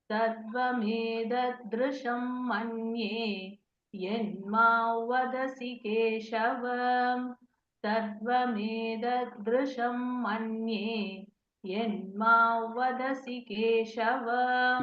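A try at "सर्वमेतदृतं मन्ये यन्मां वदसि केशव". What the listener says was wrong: It is not Rusham, it is Dhrutham. Rutam, actually speaking, Rutam, Sarvam, Etat, Rutam. Rutam, Rutam. Rutam. Sarvam, Sarvam, Etat, Rutam, Manye. So, Sarvam, Etat, Rutam, you should say, Rutam.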